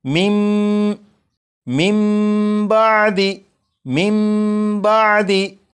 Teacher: जब नून साकिन के बाद बा है तो इस नून साकिन को फिर नहीं पढ़ेंगे, बल्कि नून साकिन को मीम से बदलेंगे और गुन्ना करके पढ़ेंगे